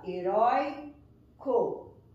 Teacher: eu percebo que a sílaba mais forte está aqui, na penúltima sílaba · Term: paroxítona